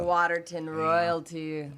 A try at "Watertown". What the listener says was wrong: But yeah, Waterton royalty. Watertown, not Waterton, Watertown.